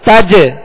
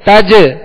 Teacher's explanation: جیم پر کیا کریں گے؟ تج، تج ری نہیں پڑھیں گے، تج یہ قلقلہ لوٹتی ہوئی آواز آ رہی ہے